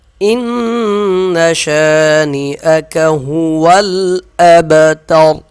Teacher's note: با پہ قلقلہ کریں گے، وقف کی صورت میں را کو موٹا پڑھیں گے